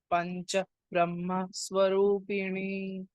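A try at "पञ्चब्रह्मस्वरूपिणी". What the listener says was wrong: Pancha Brahma Swarupini. So what happens here is before this Brahma, because of the Dvitvam, there is another B we'll pronounce, okay? Pancha Brahma Swarupini. It is not Mahaprana or Ha. It is Pancha Brahma Swarupini.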